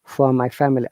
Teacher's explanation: because it is a British IPA, we're not pronouncing R